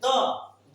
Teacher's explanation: त द बोलेंगे तो फिर दंत को छू रहा है। त वर्ग में आता है।